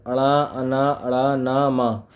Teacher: प्रत्येक वर्ग पर प्रत्येक वर्ग का पांचवा अक्षर ण, अन, ण, न, म नासिक्य व्यंजन कहलाते हैं क्योंकि इनका उच्चारण नाक से होता है